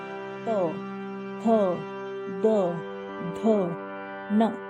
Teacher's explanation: अब दंत से जो भी त वर्ग होंगे वो दंत से निकलेंगे,